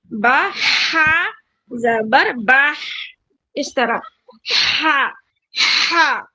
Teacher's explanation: جو بڑا والا ہا ہے درمیانی حلق والا ہا اس کو اچھے سے پروناؤنس کرنا پڑتا